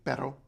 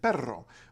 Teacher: there's a distinction between the short light R which is written as a single r in the middle of a word and the strong long R which is written as a double r in the middle of